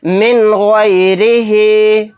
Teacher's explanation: نون ساکن کے بعد خا آ گیا تو یہاں پر اظہار حلقی کا قاعدہ ہوگا، نون کی آواز کو ظاہر کر کے بلا غنہ کے جلد پڑھیں گے۔